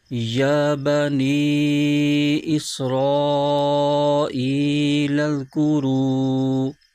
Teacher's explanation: یا پر کھڑا زبر ہے، اس کو ایک الف کھینچ کے پڑھیں گے